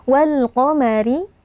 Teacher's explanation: qof ya merupakan huruf Istia atau huruf tebal jadi kita baca dengan mengangkat pangkal lidah walqomari ro kasrah dibaca dengan tipis ya tanpa menaikkan pangkal lidah · ra kasrah dibaca dengan tipis ya tanpa menaikkan pangkal lidah.